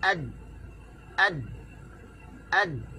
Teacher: Huruf dal tak ada angin, tahan suara belakang di ad. Bila hujung lidah letak di belakang di gusi, maka suara tertahan. Ad. Okey, dia tahan. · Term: Syiddah